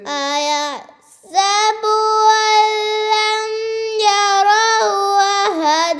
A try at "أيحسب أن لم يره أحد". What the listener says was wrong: ये हु उल्टी पेश मत है ना. أن لم يره أحد.